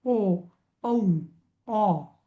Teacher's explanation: ओ, औ, ऑ हे सगळे ओष्ठ आणि कंठ आहेत.